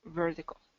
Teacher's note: Vertical is going to be a D. That's that tap T rule, because here what we have here is a vocalic R.